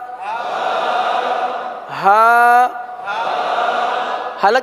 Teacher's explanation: حلق کے آخر والے حصے سے